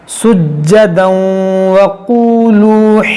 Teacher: وہ دیکھیں وادخلوا الباب سجدا وقولوا, یہاں پر تنوین کے بعد واو یہاں پر ادغام کریں گے, ناک میں آواز لے جائیں گے